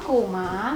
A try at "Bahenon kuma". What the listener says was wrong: Kok bukan kuma doang? Bahenon kuma.